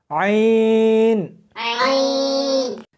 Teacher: اس کو حلق میں سے سختی کے ساتھ نکالنا ہے